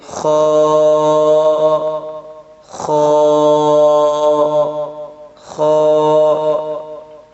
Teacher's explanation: ادنی حلق سے خا ادا ہوتا ہے